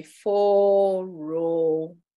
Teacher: smell and the diacritics would be four row rising and falling the first one Rises on the o sound and the second o Falls